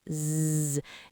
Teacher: Now put your hand on your throat and say Z. You should feel a buzzing of vibration. That's your vocal cords working. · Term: voiced